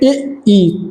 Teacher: तालव्य स्वर होते हैं इ, ई, जो तालु से बोले जाते हैं